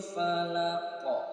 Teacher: huruf qof dalam keadaan waqaf Jadi huruf qfnya disukunkan terjadi hukum Qalqalah